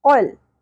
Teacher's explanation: क़ौफ नरम तालु से अदा करना है, लहात से।